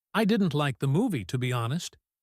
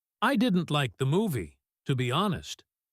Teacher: Did you hear the drop on honest? That signals I am finished stating my opinion.